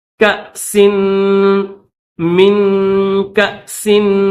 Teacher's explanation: ہے تو اس کو الف نہیں کہیں گے، حمزہ کہیں گے، تو اس کو جھٹکے کے ساتھ پڑھیں گے، کاسن نہیں پڑھیں گے